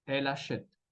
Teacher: Palabra siguiente, achète, escuchamos la A, entonces vamos a conectar la L avec la A de achète